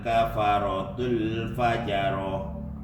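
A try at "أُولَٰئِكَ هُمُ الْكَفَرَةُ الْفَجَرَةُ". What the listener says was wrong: kafaratul fajarah, roknya ditebalkan nih.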